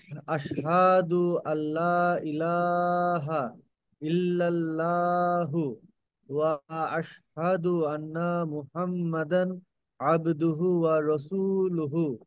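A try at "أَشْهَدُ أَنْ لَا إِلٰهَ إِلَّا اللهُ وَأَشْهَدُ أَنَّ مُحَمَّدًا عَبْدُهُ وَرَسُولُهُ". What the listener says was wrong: Excellent, মাশাআল্লাহ, very good.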